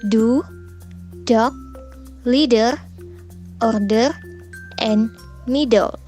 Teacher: When we pronounce D, it is articulate like T, except that the breath force is weaker and vocal cords vibrate.